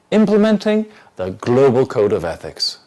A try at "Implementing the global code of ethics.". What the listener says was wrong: Don't split your chunk.